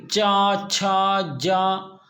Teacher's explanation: जीभ जो है तालू को छू रही यानी ऊपर के हिस्से को छू रही है